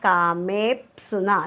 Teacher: कामेप्सुना कुठेही आघात नाही आहे. मेच्या नंतर जरी जोडाक्षर आलेलं असेल तरी मेवर आपण आघात देणार नाही, कारण मे दीर्घ आहे. आघात आपण फक्त ऱ्हस्व अक्षराच्या पुढे जोडाक्षर आलं तरच आपण आघात देतो.